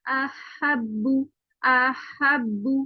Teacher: تو احبو میں اگر آپ دیکھیں تو پہلے ہا کا ہمسا رہے اور پھر آواز نکلے گی